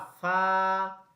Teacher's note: নিচের ঠোঁটের পেট সামনের উপরের দুই দাঁতের আগার সাথে লাগাইয়া